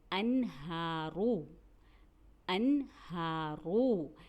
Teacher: اب یہی دیکھیے یہاں نون ساکن پھر آ گیا، لیکن ہم اسے انہارو نہیں پڑھ رہے، بلکہ ہم نے اسے کیا پڑھا، انہارو، انہارو۔ یہاں ہم نے نون کو ظاہر کر کے پڑھا، اس لیے یہاں کہتے ہیں ہم نے اظہار کیا